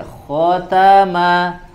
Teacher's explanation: Kho di tenggorokan bagian atas